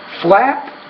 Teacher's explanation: the P is a voiceless consonant, which means the vowel which precedes it is shorter